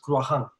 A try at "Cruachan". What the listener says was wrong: No, it's a proper CH, Cruachan. It's a hard CH.